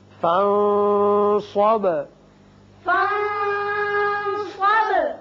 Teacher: فَانصَبْ نون پر اخفا، با کی صفت قلقلہ.